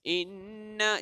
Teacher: jika nun syaddah, dia merupakan wajibul ghunnah, yang mana wajib dengung. Jika nun yang bertanda syaddah atau mim yang bertanda syaddah, wajib dengung. · Di sini ada satu nun yang kita gandakan bunyinya, iaitu nun syaddah